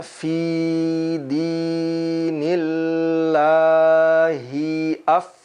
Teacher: Ada hamas, ada angin yang keluar ketika kita ucapkan huruf fa.